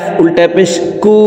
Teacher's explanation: উল্টা পেশ দিয়ে ঠোট গোল করে উপরের দিকে ধাবিত করে এক আলিফ টেনে পড়ব